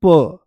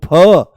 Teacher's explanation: तो प बोलती आराम से, कम प्राणवायु, ज्यादा जोर नहीं लगाना पड़ा, ज्यादा दम नहीं लगाना पड़ा। · जिसमें प्राणवायु ज्यादा निकलती है, तो हमारे फेफड़ों के नीचे जो डायफ्राम है उसमें एकदम खिंचाव सा आता है, पेट से बोले जाते हैं। इनके बारे में बोला जाता है महाप्राण पेट से बोले जाते हैं।